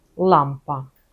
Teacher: Коли вимовляємо л українське, язик доторкається до зубів.